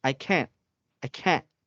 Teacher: you cannot hear the letter T at the end of the sound